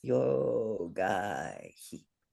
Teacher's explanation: the sound following the h is just it's not a full vowel. So we're not going to have a beat for it. And if we were reciting poetry, we would probably not pronounce that. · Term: visarga